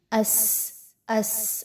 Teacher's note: सीन में जो है वो सीटी की आवाज आपको महसूस हो रही होगी